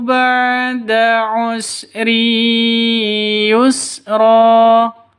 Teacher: tanwin bertemu dengan Ya cara bacanya masuk ke ya disertai dengung dua ketukan ya kenapa ini namanya idgham bighhunah idgham itu artinya masuk Ghunnah